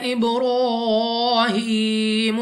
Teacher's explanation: با قلقلہ میں سے ہے، تو جب ہم ادا کریں گے ہمیں اپنی آواز واپس سنائی دے گی۔